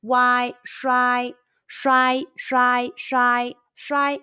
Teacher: chinese and let's combine the initial sh the final why and the high pitch first tone all together